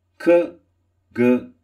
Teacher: the back of the tongue pressing against the soft palate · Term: Villar sounds